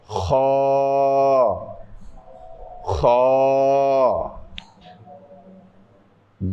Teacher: এটা হচ্ছে এমনভাবে উচ্চারণ করতে হবে যেন একটা খরখর আওয়াজ হয়। নারিকেল কুড়ার সময় যেরকম আওয়াজ হয়, আপনার নারিকেল কুড়তে যেভাবে দেখেছেন যেভাবে আওয়াজ হয়, এইভাবে এটা উচ্চারণ করতে হবে।